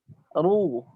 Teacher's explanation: Buat lidah antum tidak santai. Tegang lidah antum itu. Sehingga bagian belakang lidah naik ke langit-langit. Bunyinya jadi tebal.